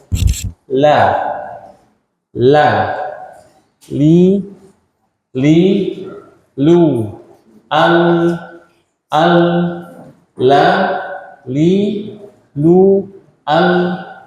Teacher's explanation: Lam itu tepi lidah bagian depan sampai ujung. Ini lidah. Ini tepi depan.